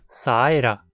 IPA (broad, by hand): saɪ̯rɐ